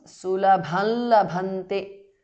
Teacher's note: Anuswara changes to the nasal of la.